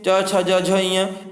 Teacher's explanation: च वर्ग में च छ ज झ ञ, ये तालव्य व्यंजन होते हैं आपके